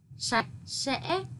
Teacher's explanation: Khi đọc cần đọc cong lưỡi âm sờ trong tiếng sạch và tiếng sẽ. Chú ý đọc đúng vần ách trong tiếng sạch, thanh ngã trong tiếng sẽ.